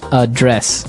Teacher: So, the verb address has the the stress on the second syllable